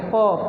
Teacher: ओठों से लगा के प बोलते हैं तो दोनों ओठ मिलते हैं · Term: ओष्ठ